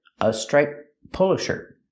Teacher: The T sound in striped is between consonants, so you don't really hear it.